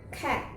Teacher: And the consonant is k. Back of the tongue to soft palate or velum, and do not vibration.